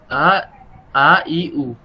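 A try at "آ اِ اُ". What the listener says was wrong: ই না তো, আ এ এ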